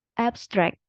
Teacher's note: Kalau yang noun itu penekanannya ada di suku kata yang pertama, abstract gitu.